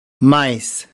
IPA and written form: maɪs (mice)